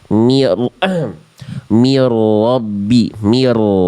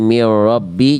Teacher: Rnya ditasydidkan ditekan tapi tetap ada getarannya. Jangan sampai jadi mirrabbi jangan jadi samar getarannya. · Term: ro bertasydid